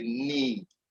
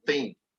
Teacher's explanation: So it's an E sound that is long as a need. Whereas this is the short E sound as a thing. So you can see that this is long, this is short.